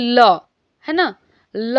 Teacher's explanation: ल जब हम बोलते हैं तो हमारे जीभ का जो आगे का हिस्सा है वो ऊपर टच करता है दांत के पास, लेकिन बाकी जो वायु है ये दोनों साइड से निकलती है, इसीलिए इसका नाम पार्श्विक व्यंजन नाम हो गया है।